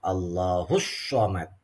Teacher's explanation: Di sini ada alif lam syamsiyah. Alif lamnya nggak jelas. Tapi langsung masuk Allahus Somad.